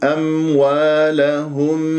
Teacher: دائما أتكلم في هذه الميم الساكنة، البعض يقول يقلقلها، وهذا خطأ، ليست من أحرف قطب جد، ليست من أحرف القلقلة